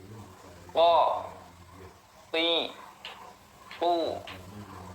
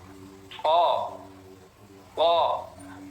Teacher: tertahan suaranya juga tertahan kemudian ada istilah terangkatnya pangkal lidah ini pangkal lidahnya diangkat sampai nempel ke langit-langit kemudian infitah rga mulut terbuka ketika mengucapkan jangan mencucu kalau mencucu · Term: huruf qo